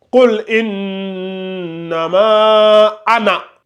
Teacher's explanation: Faut pas appuyer sur le na, là. Faut pas dire anna.